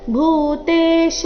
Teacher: ಭೂತೇಶ ಈ ರೀತಿ ಶ ನ ದೀರ್ಘ ಮಾಡಬಾರ್ದು.